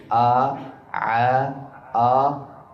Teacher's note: huruf ha dan ain makhrajnya sama yaitu dari tengah tenggorokan. Jangan mengucapkan seperti hamzah atau alif min wasal dari tengah tenggorokan yah.